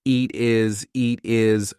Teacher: cut off the H for the word his so instead it sounds like a vowel